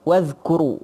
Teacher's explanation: jangan bagi ada qalqalah sebab huruf zal tu dia bukan huruf qalqalah